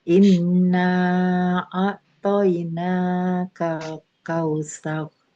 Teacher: Nanya kita menggunakan bacaan yang 6 harokat saja.